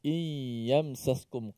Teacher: nun mati bertemu dengan ya Yang mana kita semua tahu hukum dia adalah idgham yang menuntut dimasukkan ke dalam ya